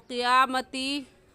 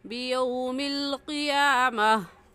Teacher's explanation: ता वक़फ़ की सूरत में इसको हाँ पढ़ते हैं